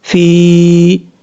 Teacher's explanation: یا ساکن سے پہلے زیر ہو تو یا مدہ ہوتا ہے، ایک الف کی مقدار اس کو لمبا کر کے پڑھیں گے، فی، اس طریقے سے۔